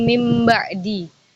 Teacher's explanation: Secara istilah, iklab itu mengubah atau menggantikan nun menjadi mim disertai dengan dengung